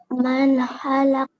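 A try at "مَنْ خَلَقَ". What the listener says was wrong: Nah, kaknya keluar nafas. Halak.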